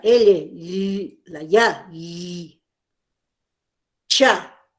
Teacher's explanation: Interviene el paladar duro, como los sonidos la L, la ya, cha. Se articula en esa zona.